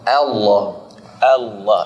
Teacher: Allah Allah itu di situ tebal juga karena sebelumnya fathah